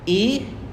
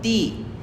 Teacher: The lips are spread and the sound is long.